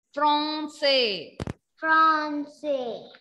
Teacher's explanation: A-N when comes, pronunciation will be O. Nasal O sound.